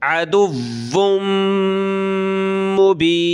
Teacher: मीम के ऊपर ये तशदीद है तो गुन्ना होगा नाक में आवाज़ पैदा करेंगे